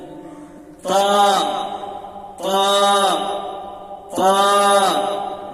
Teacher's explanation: জিভের আগা আর উপরের দাঁতের বড়ার সাথে তা তা তা